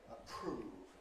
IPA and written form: əˈpr̥uːv (approve)